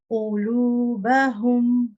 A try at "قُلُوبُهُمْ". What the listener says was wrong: Yes, what you want to be careful of here is, because you have two dhammas here, or two what do you call them again? Pesh. Yeah, pesh. Because you have two of them together, they both make a oo sound, not a o sound.